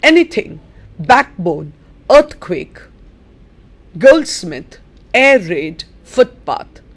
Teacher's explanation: Again, the stress is on the first syllable.